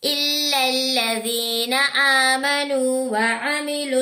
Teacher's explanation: میم ساکن کے بعد اور با اور میم نہیں ہے بلکہ نون ہے تو غنہ نہیں کریں گے. واؤ سے پہلے پیش ہے تو واؤ مدہ ہے، اسٹریچ کریں گے.